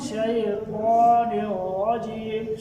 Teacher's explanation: را موٹا بھی کرنا ہے اور یہاں پہ ہونٹوں کو گول نہیں کرنا. را کے اوپر زبر یا پیش ہو تو را موٹا ہوتا ہے.